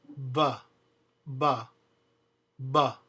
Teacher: There are no unvoiced bilabial fricatives in Spanish. The B, pronounced in Spanish, is a mixture of a B and a V. It's actually a double stop.